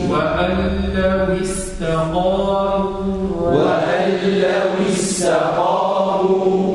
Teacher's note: نكسر الواو تخرج بانضمام الشفتين ولكن نخفض الفك السفلي